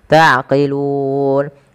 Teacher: lun ada bacaan mad ada sukun kita boleh memanjangkan dua harakat boleh empat dan boleh pula enam harakat